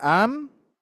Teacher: suara yang keluar dari rongga hidung yang merupakan tabiat huruf nun dan mim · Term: alkisum